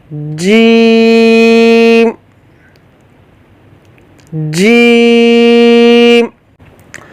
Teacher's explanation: زبان کا درمیان اوپر تالو کے درمیان سے ٹچ ہوگا، آپس میں ملے گا تو پھر یہ جیم ادا ہوگا۔ یہاں آپ دیکھیں، یہ زبان کا درمیان ہے اور یہ اوپر تالو کا درمیان ہے۔